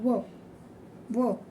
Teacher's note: व हे व्यंजन आहे तर हे व्यंजनाचा उच्चार करताना व व म्हणजे दाताला आणि ओठांना स्पर्श होतो दंत अधिक ओठ म्हणजेच काय तर दंतोष्ठ